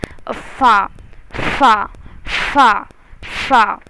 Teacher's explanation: फ़ा की आवाज़ जो है दोनों होठों के बीच से निकलेगी, एक हवा के तरह, जैसे फू करते हैं ना उस तरह से।